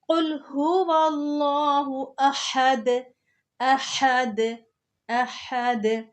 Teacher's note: ہا جو ہے اس کو حلق کے درمیان سے نکالنا ہے